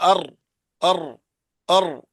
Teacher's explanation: زبان کے کنارے کی پشت جب اوپر والے 3 دانتوں کے مسوڑوں سے لگے اس سے را ادا ہوتا ہے